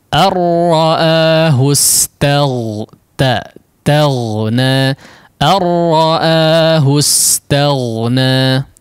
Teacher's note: Kita tahu huruf ghain ditebalkan ya di antara huruf yang tebal, sehingga jangan mempengaruhi ketipisan huruf ta ya.